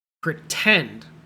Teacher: In this word, the part tend is the part we say strongly. That's called the stress. In the stressed syllable, it starts with a T. · You say pr weakly, pretend.